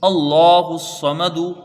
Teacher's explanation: تو یہاں لام تعریف کا قاعدہ ادغام شمسی ہوگا، صاد کو، میم کو، دال کو، تینوں حروفوں کو جلدی پڑھا جائے گا کیونکہ دو میں زبر ہے، ایک میں پیش ہے، اللہ الصمد۔